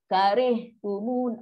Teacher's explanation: Ada angin yang lepaskan sifat ha. Dia dalam kategori rokhawah.